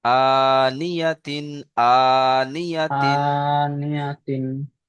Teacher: হামজার উপরে খাড়া যাবার এসেছে, খাড়া যাবার আলিফ মাদ্দার সমতুল্য, সুতরাং খাড়া যাবারকে এক আলিফ পরিমাণ টান দিয়ে পড়তে হবে।